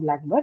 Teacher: In an adjective noun combination, the stress has to be on the adjective, right? And now because the adjective has taken the first position in this compound blackbird, it is stressed on the first syllable black